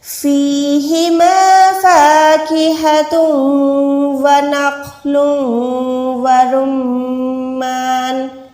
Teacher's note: را کو میم کے ساتھ ملائیں، را کو موٹا ادا کریں۔